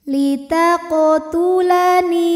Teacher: Kemudian ada hukum qalqalah sughra karena ada huruf qalqalah yang sukunnya ini sukun asli dan ada di tengah bacaan. Maka kita baca qafnya ini dengan pantulan yang kecil.